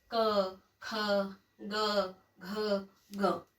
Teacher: आपने देखा पीछे जो जीभ का भाग है वो ऊपरी भाग को छूता है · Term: क वर्ग